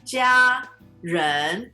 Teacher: 家 人. 家 人. First tone, second tone